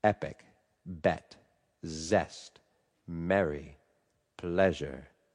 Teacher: So it's very front and then eb epic bet zest merry pleasure e and then also really front and it's a millimeter or two down with each one of these sounds. The jaw begins to drop slightly and every sound is a little bit more open but still very front.